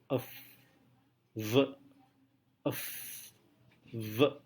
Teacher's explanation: Labiodental berarti suara diproduksi dengan menyentuhkan gigi bagian atas dengan bibir bagian bawah.